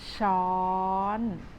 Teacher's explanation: easy for you to start pronouncing this word with shawl and gradually Rising your tone a little bit higher